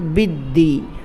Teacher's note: یکذب بالدین، با دال زیر بد، دال یا زیر دی، بدی، با کو دال کے ساتھ ملانا ہے کیونکہ دال پر تشدید ہے